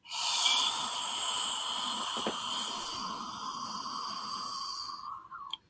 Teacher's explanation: It's way in the back of the throat with the mouth open like a hollow cave.